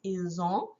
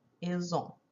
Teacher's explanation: we kind of say the S but it sounds like an z it's called a liaison